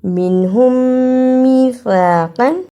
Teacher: میم ساکن کے بعد میم آیا ہے، اسے ادغام شفوی کہتے ہیں. دونوں میم کو ملا کر غنے کے ساتھ ادا کرنا ہے